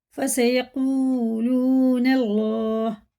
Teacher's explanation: دونوں حروف مدہ الٹے پیش کی طرح کھینچ کے پڑھیں گے، اللہ کا نام زبر کے ساتھ ہے، پر پڑھیں گے، یا پر کے معنی ہوتے ہیں منہ بھر کے موٹا کر کے پڑھنا